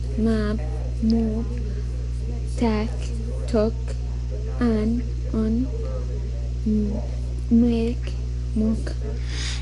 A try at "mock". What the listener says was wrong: You want to say mock. It's not mook. Ma, ah, pot, mop, talk, on, mock. So that particular vowel sound.